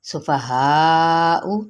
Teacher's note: 4 حرکت لمبا کریں گے۔